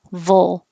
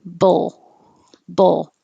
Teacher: Immediately, when I finish my V, my tongue goes up to the L, vul.